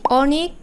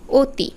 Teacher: প্রথম শব্দ অনেক এখানে অ এর উচ্চারণটা কেমন হয়েছে একটু চোয়ালটা বেশি বিস্তৃত হয়েছে বেশি প্রসারিত হয়েছে অ আর অতি এখানে কিন্তু চোয়ালটা কম প্রসারিত হয়েছে এবং ঠোঁট অপেক্ষাকৃত বেশি গোলাকার হয়েছে এই অতি যে অখানে অ